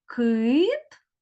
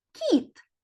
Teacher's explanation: у цих словах кит звук к а слово кіт звук кі у слові кит перший звук к твердий а у слові кіт перший звук к м'який